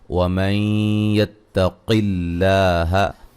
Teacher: یہاں ادغام مع الغنہ ہے، قاف کو موٹا ادا کریں گے، لفظ اللہ کو باریک پڑھیں گے، اس سے پہلے حرف پر زیر ہے